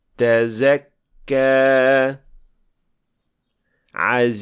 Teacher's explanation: Zay is a voiced sound, which means that in producing this sound, we vibrate the vocal cords. So, Sin is a voiceless sound, so we don't vibrate the vocal cords when pronouncing it, but we do that with Zay.